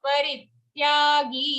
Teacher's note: Gi at the end here, you can drag it. Okay, it's a long sound.